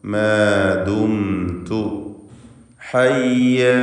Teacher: സാക്കിനത്ത് മീം ഇൽഹാർ ഷഫവി നൽകി മണിക്കാതെ വെളിവാക്കണം.